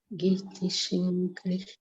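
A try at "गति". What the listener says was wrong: It should not be Giti, it should be Gati.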